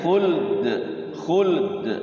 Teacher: Ya lamnya Sukun dalnya sukun diqalqolahkan